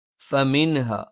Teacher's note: ഫ മേലെ മുൻപല്ലിന്റെ താഴ്ഭാഗം താഴെ ചുണ്ടിന്റെ പള്ളയിലാണ്